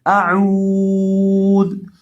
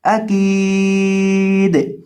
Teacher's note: وقف کرتے وقت دال کو ساکن کر دیں گے، اعوذ۔ حمزہ زبر آ، کاف زیریہ کی، اکی، دال پیش دو، اکیدو۔